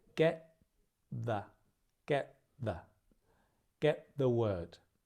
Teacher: get ends in a t, the begins with a the. The tongue is in a very similar place. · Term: link